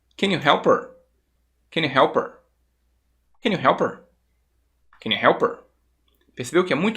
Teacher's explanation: o can you quando você fala mais rápido ele vai ficar simplesmente um can e o you às vezes ele vai se tornar simplesmente um